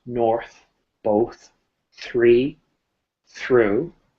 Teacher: when we're dealing with content words such as north both three through there should be no vibration